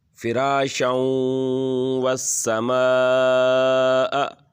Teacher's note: یہاں پر تنوین آ گئی ہے 2 زبر کی اور آگے حروف یرملون میں سے واو آ گیا ہے، تو یہاں پر ادغام ہوگا